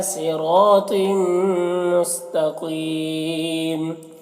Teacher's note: طم میں تو کو پر پڑھیں گے، حروف مستعلیہ میں سے ہے اور یہاں پر تنوین کے بعد میم ہے، حروف یومن میں سے، تو تنوین کو میم سے ملا کر غنہ کے ساتھ پڑھیں گے، اس کو ادغام ناقص کہتے ہیں۔ مستقیم میں قاف کو پر پڑھیں گے اور یہاں پر وقف کی صورت میں میم کی 2 زیر کی تنوین سکون سے بدل جائے گا، تو پھر یہاں پر مد عارض وقفی ہوگا۔